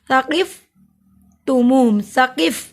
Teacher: ज़बान की नोक को दांतों के किनारे से लगाइए, इस पे सीटी की आवाज़ नहीं आती , नहायत ही नरमी वाले हरूफ हैं ये 3 हरूफ साकिफ